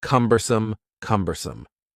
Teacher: The word cumbersome has 3 syllables, and the stress is on the first syllable